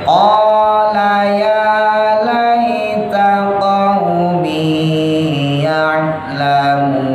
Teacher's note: Qala pendek, ya-nya panjang.